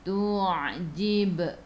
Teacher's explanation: Ai'u daripada kerongkong, bukan daripada hidung.